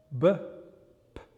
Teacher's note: they're bilabial because, as you can see, both my lips are coming together to make the sound